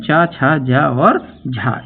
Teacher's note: ये स्पर्श संघर्षी व्यंजन कहलाते हैं